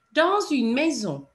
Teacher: And normally, as you know, we don't pronounce the last letter of a word, but in this instance, because the S runs into a vowel, you would hear it. Dans une maison.